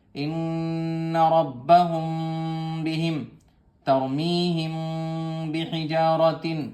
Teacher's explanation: میم ساکن کے بعد اخفا کریں گے، دیر لگائیں گے ایک الف کے برابر